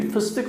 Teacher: Bu ses olayında kelime içindeki dar yuvarlak ünlülerin çevre ünsüzlerinin etkisiyle düz dar ünlüye geçişleri söz konusudur. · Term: Ünlü düzleşmesine